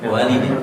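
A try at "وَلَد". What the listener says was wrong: Walad. Kalau walid ada alif. Walid. Walidun. Ayah artinya walid itu. Kalau wanya tidak ada alif, berarti apa? Walad.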